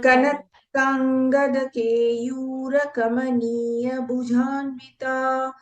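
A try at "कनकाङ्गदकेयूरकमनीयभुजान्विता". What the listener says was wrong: Bhagini, it is Kanakankada Keyura Kamaniya Bhujanvita. The Bha is Mahaprana.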